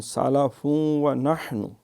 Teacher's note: ملائیں گے تو ادغام ہوگا فا کا واو کے اندر